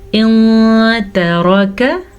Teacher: नून साकिन के बाद ता है तो हम नून को छुपा के पढ़ेंगे। इन तरक तरक, रा को पुर पढ़ना है, काफ को बारीक पढ़ना है।